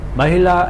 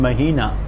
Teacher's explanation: the one with short vowel has stress on the first syllable, the one with the long vowel has stress on the middle syllable